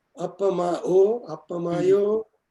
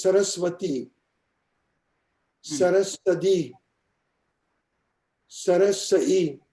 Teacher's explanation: So there is a sequential, slow simplification, disappearance of consonants between vowels that starts taking place